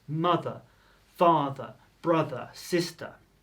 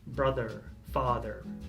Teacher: In American English they sort of say the 'r' a little bit more